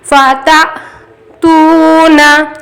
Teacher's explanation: فا تا، اب یہاں حمزہ ساکن ہے، حمزہ ساکن پڑھنے میں جھٹکا ہوگا